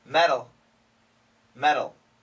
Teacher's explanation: flat T, which makes it sound like a D